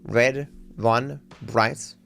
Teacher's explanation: Australians only really use the R sound when it comes before a vowel